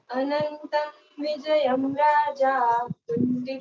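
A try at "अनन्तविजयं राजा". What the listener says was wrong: अनंतम नहीं है अनंत है। अनंत विजयम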